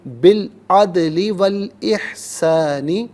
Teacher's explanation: دونوں مقامات میں سے لام ساکن کے ساتھ ملائیں گے اور درمیان میں سے الف یعنی حمزہ کو حذف کریں گے۔